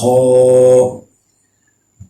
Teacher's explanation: ہا، خا، یہ آپ نے منہ پورا کھول کے پڑھنا ہے اس کو، اور گلے میں جیسے خراش سی ہوتی ہے اس طریقے سے آپ نے پڑھنا ہے اس کو۔